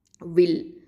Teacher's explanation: வாவ் அப்படிங்கிறது ஷஃபத்தான உதழ் எழுத்து